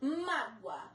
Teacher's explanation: O OA estão juntos numa mesma sílaba. A sílaba forte é o má, acento no má. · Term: paroxítonas terminadas em ditongos